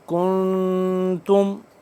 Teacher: وَأَنْتُمْ مُسْلِمُونَ ام کنتم، کنتم کاف نون پیش کن، نون ہے ساکن، یہاں پہ ہم اخفا کریں گے۔